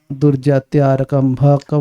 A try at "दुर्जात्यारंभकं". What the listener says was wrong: आरक का हो गया भाई। दुर्जात्यारंभकं पापम यत् स्यात् प्रारब्धमेव तत्।